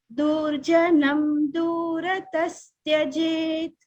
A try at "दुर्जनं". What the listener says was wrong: हाँ, दुर्जना, दो छोटा है। ठीक है, दुर्जनम और छोटा, दुर्जनम